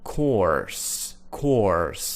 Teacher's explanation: they have what we call a rhotic R in American English